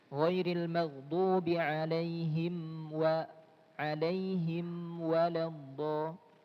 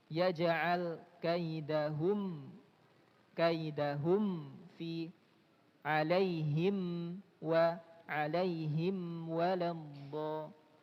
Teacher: mimnya dibaca jelas tanpa ada dengung tambahan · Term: idhar syafawi